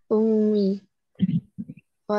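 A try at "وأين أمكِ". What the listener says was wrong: kenapa ummi wa aina ummuki dhammah dhammah ya Kak.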